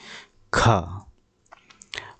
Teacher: और खा जो है स्पर्श व्यंजन के अंतर्गत आता है। कंठस्थ ध्वनि अघोष महाप्राण ध्वनि भी कहलाती है।